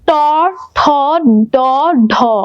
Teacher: তোমার জিহ্বাটা উল্টিয়ে কোথায় লাগছে, মূর্ধায় লাগছে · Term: মূর্ধন্য